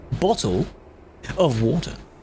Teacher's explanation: If you're saying it mid-sentence really fast, the T sound disappears. It's a thing called the glottal stop, apparently.